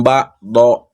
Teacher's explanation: apabila dia dibacanya waqaf, maka ini menjadi hukum bacaannya adalah mad iwad yang dibacanya panjang 2 harokat